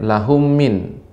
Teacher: Mim mati bertemu dengan mim yang berharokat. Ini namanya idgham mimi atau idgham mislain, maka harus dipanjangkan. Jangan jangan terlalu pendek.